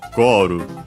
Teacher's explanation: the accent should be on the first syllable, just like in English it is. So Goru, high, low, low.